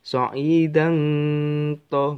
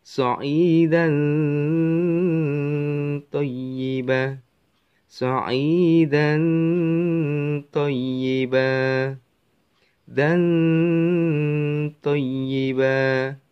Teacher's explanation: Ya, tidak dibaca kok so'idang to, bukan. Enggak berbunyi eng ya. Tapi berbunyi huruf apa yang ada di depannya. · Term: ikhfa